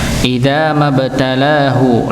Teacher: Lanya juga panjang dua harakat dikarenakan alif bertemu dengan fathah.